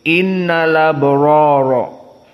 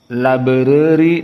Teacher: Innal abroro dibaca rnya dalam keadaan tafkhim dan labori dalam keadaan tarqik